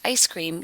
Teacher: yes we do Canadian raising on ice cream because the sound the voices is part of the word ice